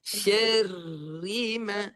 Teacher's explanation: Bunyi ra nipis dengan getaran yang jelas.